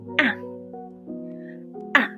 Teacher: The fourth tone sounds very short and decisive. It drops quickly, like ah, ah.